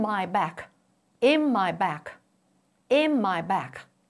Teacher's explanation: N sound in in assimilates with the m sound in my, resulting in my back, in my back, in my back. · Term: consonant assimilation